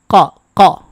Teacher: কফের মাখরাজ হচ্ছে জিহ্বার গোড়া, তার বরাবর উপরের তালুর সাথে লাগাতে হবে। বুঝতেই পারতেছেন জিহ্বার গোড়া কিন্তু মুখের সামনের দিকে না, ভিতরের দিকে। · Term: কফ হরফের উচ্চারণ